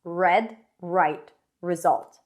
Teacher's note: sides of the tongue touch the sides of the teeth and the tip of the tongue doesn't touch anything there is tension inside but not too much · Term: the American r